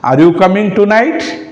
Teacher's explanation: Here I am raising my voice. This is rising tone.